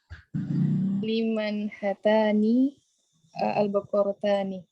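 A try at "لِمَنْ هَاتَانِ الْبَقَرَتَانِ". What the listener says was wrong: Liman hatanil baqaratan. Haknya panjang, pakai alif. Liman hatanil baqaratan. Kalau mudzakkar hadani pakai alif kecil atau fathah berdiri di hak. Tapi kalau mutsanna haknya pakai alif.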